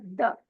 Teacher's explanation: तो ये त है और द भी सेम उसी जगह प हम जबान की टिप को ऊपर के दांतों की जड़ से टच करेंगे फिर अदा होगा द